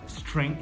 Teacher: Junta ST, não tem um I antes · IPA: /streŋθ/